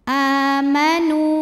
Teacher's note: huruf Dal panjang dua harakat walladina a a mad badal karena ada Hamzah yang dipanjangkan cara membacanya dipanjangkan hamzahnya ini dua harakat